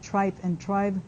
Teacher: we get this contrast between the vowels that goes along with the voicing of the following consonant